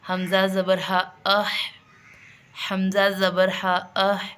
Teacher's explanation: ہا پورا ادا ہوگا، آواز نکلے گی لیکن آواز بلند نہیں ہوگی، جبکہ سانس اس میں جاری رہے گا ہمارا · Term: ہمز